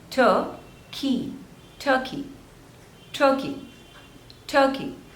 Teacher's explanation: There are 2 syllables and the stress is on the first one.